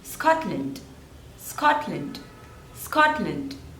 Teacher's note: there are two syllables and the stress is on the first one